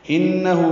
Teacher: انہو ہا اقصی حلق سے نکالیں گے اور دو حرکات لمبا کریں گے